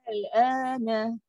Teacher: Lam ni sukun. So, bila sukun suara kita pun mendatar rendah aja, tapi kena tarik panjang. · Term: mukhafaf